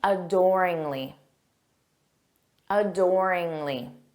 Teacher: notice that syllable stress on door